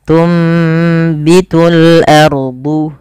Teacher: karena ada huruf ba, maka suara nunnya dirubah dan diganti, dibalikkan menjadi suara huruf mim. Maka awalnya tunbitu dan ditandai di sini dengan mim kecil agar mim kecilnya mengganti posisi nun. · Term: iklab